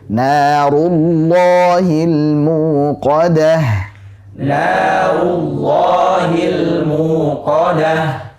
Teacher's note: Ru dhammahnya sempurnakan dan tebalkan huruf ra-nya. Jadi jangan narullah ru.